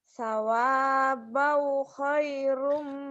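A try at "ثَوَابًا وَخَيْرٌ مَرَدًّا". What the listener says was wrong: Sawabau wahnya kan nyamber dan double. Itu mah nyamber doang. Wahnya dibawa lagi. Nyamber dan double.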